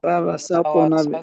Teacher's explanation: سین صاد بھی نہ بنے کیونکہ سین کے بعد طا موٹا حرف ہے. فوسطنا بھی جمع نہیں جمع، اس پر رکیں گے نہیں.